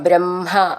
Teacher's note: ബ്രഹ്മ എന്നുള്ളതിൻ്റെ ഉച്ചാരണം ശ്രദ്ധിച്ചോളൂ. ഹ മ എന്ന് ആണ് എഴുതിയിട്ടുണ്ടാവുക വെച്ചാലും മ ഹ എന്ന് വരണം. രണ്ടും ചേർത്ത് ചൊല്ലണം.